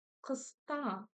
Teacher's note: Букву К вы читать умеете, букву вы помните, что она произносится у нас. Коротко и твердо, ударение на второй слог.